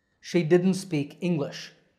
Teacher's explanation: Now you can say didn't with a t at the end, but when we speak in full sentences, we often leave out that t sound.